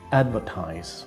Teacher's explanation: the verb is pronounced advertise with the stress on the first syllable